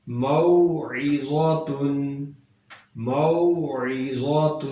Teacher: واو ساکن ہے اور اس سے پیچھے میم پر زبر ہے، یہاں پر واو لین بن گیا، نرمی سے پڑھیں گے